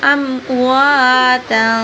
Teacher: واو کو لمبا کریں گے اور اخفا کریں گے